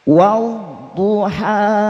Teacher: bukan wad tapi wau wa huruf dad itu nanti secara makhraj sisi lidah menyentuh gigi geraham